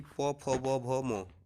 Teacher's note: प, फ, ब, भ, म, ये सब जो है ओष्ठ से बोला जाएगा